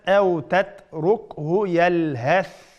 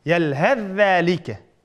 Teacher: Ammo ulab o'qigan chaqimizda idg'om qilamiz, idg'om qilib o'tamiz. Idg'om qilib zalga o'tib ketamiz